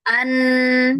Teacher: Kalau huruf nun katanya sebagian suaranya lewat ke pangkal hidung.